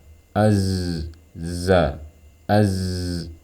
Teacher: sirofir nah ini yang dimaksud dengan theis pada huruf Zai tapi desisnya tidak boleh setajam seperti pada huruf Sin · Kenapa karena desis pada huruf Sin didorong oleh sifat hams namun desis pada huruf Zai dia bersifat jahr maka tidak boleh suara desisnya sama seperti Huruf Sin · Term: sofir